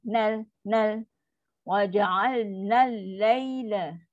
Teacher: Nun terus masuk kat lam. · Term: syamsiah